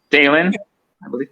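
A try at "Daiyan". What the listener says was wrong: There's no L in his first name.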